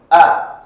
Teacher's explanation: Makhraj huruf hamzah ini di tenggorokan paling bawah.